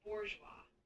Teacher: The emphasis is usually on the last syllable